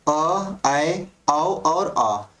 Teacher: इन सभी को बोलने पर हमारा जो मुख द्वार होता है वो आधा खुला रहता है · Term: अर्ध विवृत